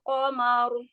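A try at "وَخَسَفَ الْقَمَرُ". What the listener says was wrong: Qamaru, jangan diayun, ma-nya. Ya, hati-hati jangan memanjangkan harokat mimnya ya. Jangan dipanjangkan ya.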